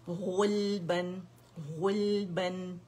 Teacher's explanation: موٹا پڑھیں گے, ٹھیک ہے, زبان کی جڑ اٹھائیں گے